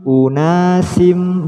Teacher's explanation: Unasin, ketika sinnya ini dilafadzkan sudah siap melafadzkan mim, otomatis menjadi unasim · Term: idgham bi gunnah